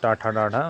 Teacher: इन व्यंजनों का उच्चारण करते समय जीहा का आगे का भाग कठोर ताल के पिछले भाग को स्पर्श करता है। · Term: मूर्धन्य